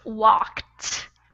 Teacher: it's pronounced walked with almost like a T at the end